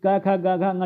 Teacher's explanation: क ख ग घ जो होते हैं कंठ ध्वनियां होती हैं